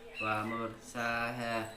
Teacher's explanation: mur roknya dibaca tafhim sebab didahului oleh harokat fathah. Sa dibaca panjang seperti bacaannya matobi'i.